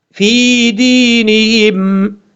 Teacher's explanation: فا کے بعد جو یا ہے اس یا کو لمبا کریں گے کیونکہ یہ یا مدہ ہے، ایک الف کی مقدار لمبا کر کے پڑھا جائے گا. دال کے بعد یا مدہ ہے، اس کو بھی ایک الف کی مقدار لمبا کریں گے